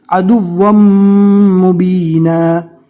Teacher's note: ملاتے وقت دو زبر پورا نہیں پڑھا جائے گا، ایک زبر ہٹ جائے گا، صرف ایک زبر ہی پڑھنا ہے